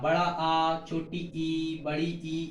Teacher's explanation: आवृत्ताकार में इसमें क्या होता है कि हमारा मुख क्या है, पूर्ण रूप से गोल ना हो, यानी कि गोला ना बने